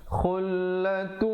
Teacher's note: idgham bi gunnah, masuk beserta dengung